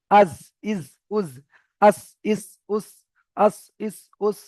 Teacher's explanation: তাহলে বুঝতে পারবেন যে জিভের আগাটা সামনের উপরের এবং নিচের দুটো দাঁতের আগায় গিয়ে লাগছে। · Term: জা সিন সদ